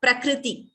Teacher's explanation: when we say pra, we use the lips. For kr, we don't close the lips for kr.